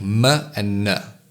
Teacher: nasal sounds are created by allowing air to flow through the nose like M and n